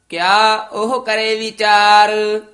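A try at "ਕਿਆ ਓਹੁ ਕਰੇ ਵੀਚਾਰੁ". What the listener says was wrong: ਉਹ ਹਾਹੇ ਹੋੜਾ ਨਹੀਂ ਲਾ ਦੇਣਾ, ਊੜਾ ਵਧਾ ਕੇ ਉਹ ਕਿਆ ਉਹ ਕਰੇ ਵਿਚਾਰ।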